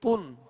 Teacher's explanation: اور دو پیش جو ہیں یہ ہونٹ گول کر کے ادا کریں گے. اگر ہونٹوں کی گولائی کامل نہیں ہوگی تو یہ مجہول پڑھا جائے گا، یعنی تن اور تن، یہ فرق آپ محسوس کریں.